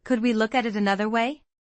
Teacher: Notice the rising intonation at the end. It sounds like a genuine question.